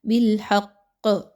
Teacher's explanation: ساتھ میں قاف ہے تو موٹا کر کے قلقلہ ہوگا، بالحق مضبوطی کے ساتھ موٹا کر کے تھوڑا سا قلقلہ کی آواز نکالی جائے گی ، یعنی آپ نے تھوڑا سا قاف کو ہلا کر پڑھنا